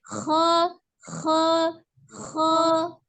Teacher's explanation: termasuk huruf al-halki dari tenggorokan bagian atas ya, menebalkannya juga dengan cara mengangkat pangkal lidah karena sifatnya adalah isti'la, mengangkat pangkal lidah bukan dengan memonyongkan bibir ya.